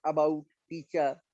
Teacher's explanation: Central part of the tongue move कर रहा है, जैसे अबाउट टीचर तो ये सेंट्रल वॉल होगा.